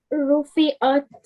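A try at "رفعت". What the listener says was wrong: Yeah, so, okay, this letter has to sound a bit different to this one here. This is an alif, and this is an ayn.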